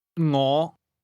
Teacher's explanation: This word begins with a soft NG sound, something like the end of the English word singing.